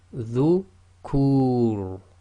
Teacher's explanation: So now. Then if you've got the Ra acting as sakin at the end of a sentence or a stop, and the previous sound before it is the long vowel Dhamma Wow, then again it's heavy